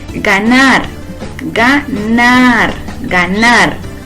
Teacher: Sílaba tónica en ganar es nar. Podemos ver que termina en una R diferente a N, S o vocal.